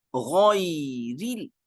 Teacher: را کی زیر کو باریک پڑھیں گے